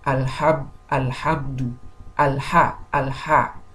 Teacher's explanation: me saying alha, there is no ghunna, there is no sound coming from my nose